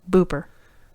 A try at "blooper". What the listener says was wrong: No, not booper. Blooper. Yes, with the L.